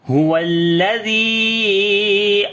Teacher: So this mad is called madde munfasil. So we long almost 2 to 3 alif here